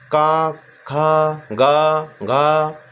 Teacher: ये गले से निकल रहा है, इसीलिए इसको हम बोलेंगे कंठ या कंठय बोलते हैं।